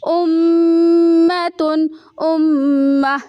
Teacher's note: یہاں پہ میم میں آواز کو تھوڑا سا ہم ٹھہرائیں گے